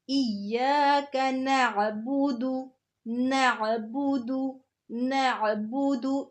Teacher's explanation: ایاک، تشدید آ رہی ہے نا، تو جب تشدید آ رہی ہو تو اس لفظ کو جماؤ کے ساتھ پڑھے ہیں، ایاک نہیں کہ بلکہ ایاک، ایاک، ایاک نعبد، نعبد، نعبد، اس کو حمزہ کی طرح نہیں بولنا، یہ عین ہے